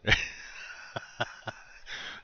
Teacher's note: this is a guttural sound. And it sounds like it's like when you're going to spit, you make that sound. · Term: guttural H